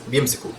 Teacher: The B with the ya sort of gets mashed up into just the B with the kasra